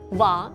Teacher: he never pronounced the R sounds at the end of the words, like va instead of var.